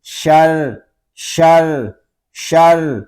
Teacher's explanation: رام شدد ہے، ہم ایک حرکت تک اس میں تکرار کریں گے